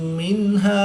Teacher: نون ساکن کے بعد ہا حروف حلقی میں سے ہے تو یہاں پر اظہار ہوگا، یہاں پر غنہ نہیں کریں گے۔ وقف کی حالت میں الف مدہ کو تبدیل نہیں کریں گے بلکہ ایک الف یعنی دو حرکات کے برابر ہی پڑھیں گے۔